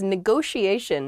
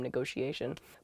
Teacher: neither T is a hard T. They're both very soft, that sh sound, because they're followed by the I and another vowel, the she, a negotiation.